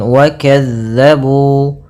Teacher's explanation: Pada bacaan wa kazzabu, hati-hati dalam melafalkan huruf zal yang dimana zal ini pelafalannya dari ujung lidah kita menempel dengan gigi sari atas kita.